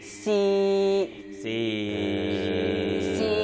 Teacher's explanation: 最后一声压到最低放平